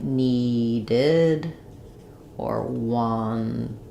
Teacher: So if the word already ends in a T or a D, like need or want, then I'm going to have needed or wanted. So the ed is going to become the id sounds.